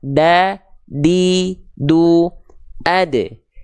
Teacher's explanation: huruf dal ujung lidah nempel ke Pangkal gigi Sari atas